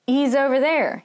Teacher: the he sound can sound more like an e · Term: lazy american speech